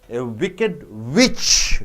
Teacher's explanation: Witch is a noun, wicked is a adjective. So, you are not stressing on wicked, you are stressing on witch.